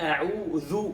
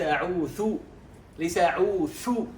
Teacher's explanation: أن الناس يخلطون بين الذال والثاء، فربما صلينا على رسول الله صلى الله عليه وآله وسلم، ربما أتوا بهمس في الذال فأصبحت كأنها ثاء. همس يعني نفس، بينما الذال لا يوجد فيه نفس، هي من حروف الجهر وليست من حروف الهمس